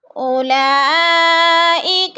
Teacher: اکثر لوگ اس میں غلطی کرتے ہیں، اولا یعنی واو کو پڑھ جاتے ہیں، واو کے اوپر کوئی حرکت نہیں ہے، زبر زیر پیش، تو واو کو نہیں پڑھنا، حمزہ کو لام کے ساتھ جوڑ کر مد کرنی ہے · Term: مد متصل